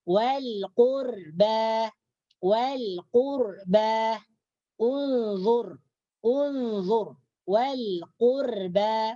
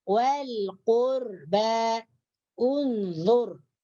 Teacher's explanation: ra sakinah di sini atau ra mati ini dibaca tebal